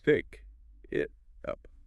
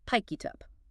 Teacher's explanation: Because the mouth wants to keep the air flowing, the final consonant literally jumps across the physical space between the words and attaches itself to the front of the next word